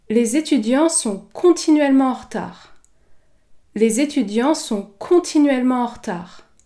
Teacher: Ici, j'ai accentué la syllabe con.